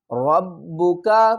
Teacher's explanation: را کو پر پڑھیں گے، با کے ساتھ ملائیں گے اور سختی کریں گے